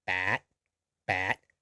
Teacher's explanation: We also have 8. It's actually a long vowel with a dead ending.